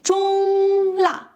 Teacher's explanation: make sure you hold the first tone high and level before dropping sharply for the second